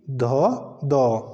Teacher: यह हमारे पास अघोष वर्ण नहीं है यह क्या है यह घोष वर्ण या सघोष वर्ण है